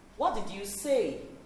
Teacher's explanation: It ends at the rising intonation. The last syllable is going to go up.